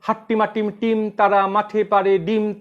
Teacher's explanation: এই ক্ষেত্রে প্রতিটা পর্বের শুরুতেই একটি শ্বাসাঘাত হচ্ছে, শ্বাস দ্বারা আঘাত হচ্ছে। এই শ্বাসাঘাতের চিহ্ন হচ্ছে এরকম।